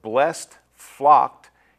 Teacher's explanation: The ending sounds of blessed, flocked, is pronounced more like a T than a D.